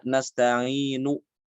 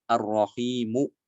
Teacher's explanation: ini harakat Nah kita juga bisa mewakafkan dengan cara ROM yaitu membunyikan harokat dhomah itu kurang dari satu harokat cepat